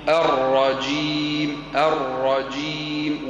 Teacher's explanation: والجيم فيها شده فيها شده الجيم تخرج من وسط اللسان